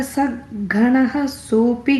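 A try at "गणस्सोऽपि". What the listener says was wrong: And the second line, instead of ganaha, it takes a is sound. Ganas sopi.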